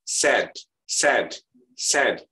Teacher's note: Jadi dia AE-nya itu disengau. Jadi tidak jelas A dan tidak juga jelas E. Perpaduan antara AE.